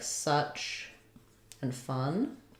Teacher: it's vowel schwa, central, unrounded, and it's in words like such and fun.